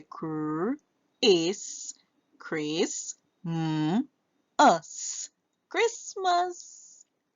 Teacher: the A makes the schwa sound